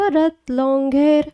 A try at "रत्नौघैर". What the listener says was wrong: Long नहीं है, रत्नौघैर।